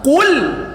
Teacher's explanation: qul pakai qaf, pangkal lisan makhrajnya. Qul, lamnya tipiskan.